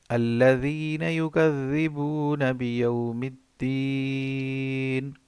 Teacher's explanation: دیکھیں دونوں ذال ہیں تو ہم نرم ادا کریں گے